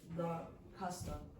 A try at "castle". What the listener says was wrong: Do not pronounce the T, and the pronunciation of words in English is like this.